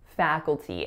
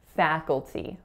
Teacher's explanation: fa, with that tense a sound, then k, u, dark l, so kul, and then t with a tense e at the end